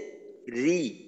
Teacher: র জের রি, এইখানে র পাতলা হবে, কারণ রয় যখন জের হয় ওই সময়টা র কে পাতলা করে পড়তে হয়, আর বাকি যখন জবর বা পেশ থাকে ওই সময় রয়ের উচ্চারণ মোটা করে করতে হয়।